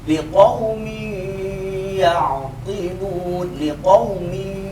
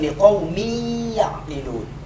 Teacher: Pangkal hidung itu berada antara dua alis mata kita. Maka ketika kita mengucapkan idgham bi ghunnah, itu ada getaran di antara kedua mata kita